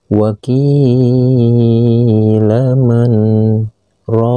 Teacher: Dikarenakan keberadaan posisi ini terdapat tanda saktah, maka tidak boleh lagi dibaca marro, tapi harus dibaca man, lalu berhenti sejenak atau berhenti satu ketukan tanpa melepaskan napas, lalu dilanjutkan dengan membaca rokin